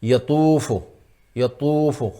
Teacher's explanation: اس میں حرف مستعلیہ یطوف، طا ہے یطوف، یطوف، خوب موٹا کر کے پڑھیں گے طا کو ورنہ یہ تا ہو جائے گی